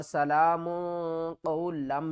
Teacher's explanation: سین زبر سا، لام کھڑا زبر لام، سلام میم دو پیش مون، سلام قاف واو زبر قو، لام کو ہم نے میم کے ساتھ ملانا ہے، میم مشددہ گنہ کریں گے